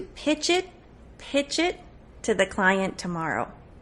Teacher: you're not going to finish that air at the end of pitch you're going to connect the cha to the E